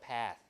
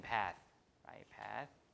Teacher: the TH at the end is voiceless, right? At the end of a word, so it's voiceless